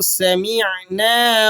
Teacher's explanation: سین کو آپ نے حروف صفیریہ میں سے ہے، باریک سیٹی کے ساتھ ادا کرنا ہے